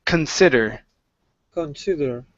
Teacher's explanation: it's a kun sound at the very beginning, very lazy sound